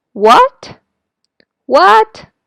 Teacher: going up is similar to Chinese second tone